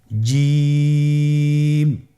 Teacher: আপনারা জিহ্বার মধ্যখানটা লক্ষ্য করুন এবং তার বরাবর উপরে তালির সঙ্গে লাগান।